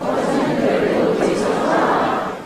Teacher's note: here is a longer Rising Head. Notice it's not the emphatic version. It just goes on straight up.